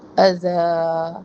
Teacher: الا، مداری مد منفصل، اور یہاں پہ وقف کریں گے اذا پر، وقف بالابدال. تنوین کو ہم حرف مدہ الف سے بدل دیں گے